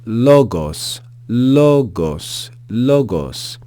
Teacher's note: the pitch is going to rise as we read that vowel that first syllable